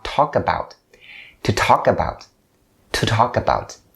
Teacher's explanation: For the pronunciation, the first thing that you have to be aware of is the connection between the word talk and about. So you bring the k sound at the end of the word talk over to about.